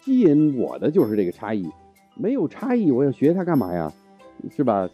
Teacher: His tones are fairly exaggerated, which might be influenced by his Xiangsheng training, but his flow is very natural, so overall he sounds really animated and expressive.